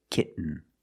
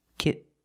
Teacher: we have to make a stop T and Link it to the N